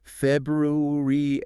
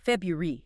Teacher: Most native speakers use a shortcut. They drop that first R sound saying February.